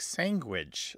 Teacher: velar nasal stop which makes the word come out like sandwich so it's a very nasalized almost ng